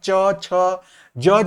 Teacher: जब हम च, छ, ज, झ बोलते हैं तो हमारी जीभ जो है, जिह्वा जो है वो तालु को टच करती है, उसको छूती है, तो ये इसी के अंतर्गत आ जाएगा। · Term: तालव्य